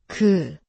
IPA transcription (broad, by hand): geu